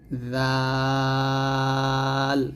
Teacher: জিহ্বার আগারটা সামনের উপরে দুই দাঁতের আগার সঙ্গে লাগিয়ে নরম সুরে উচ্চারণ করতে হবে